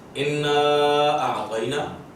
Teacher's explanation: اس کو مد منفصل کہیں گے کہ حروف مدہ کے بعد حمزہ آئے لیکن اگلے لفظ میں, اسی لفظ میں نہ ہو